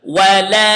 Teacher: here we have 4 seconds in the alif